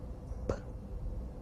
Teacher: The p sound is produced with both lips folded before letting the air out.